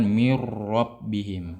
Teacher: maka kita diharuskan untuk memperjelas tikrar ya ketika pada pendengar. Maksudnya ketika didengarkan tuh jelas tikrarnya, takrirnya jelas.